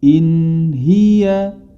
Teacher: in in sendiri kemudian h-nya pun dia jelas sendiri dibacanya secara terpisah jangan sampai terserat atau terpantul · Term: zhar, ilhar